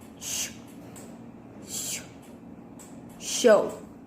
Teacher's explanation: With manner of articulation, fricative, and place of articulation, palato-alveolar.